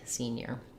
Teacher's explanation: you need to be able to connect between the N and the glide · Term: NY glide